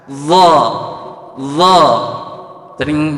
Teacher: Kedua, dha, lidahnya sebagian nempel, meskipun nempelnya samping hafatul lisan atau pinggir lidah menempel pada gigi geram atas